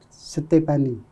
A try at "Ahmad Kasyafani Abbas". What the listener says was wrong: bukan Ahmad Kasyafani. Pakai K, Syafani. Ahmad Kasyafani Abbas.